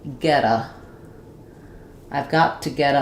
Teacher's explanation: we're dropping that T and changing it to what's called a flap T. So we always use a flap T when the word ends with a T and the next word starts with a vowel sound.